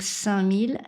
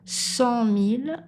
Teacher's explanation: 5000, la langue est derrière les dents du bas. 100 000, elle est un petit peu plus loin en arrière. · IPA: /sɛ̃mil/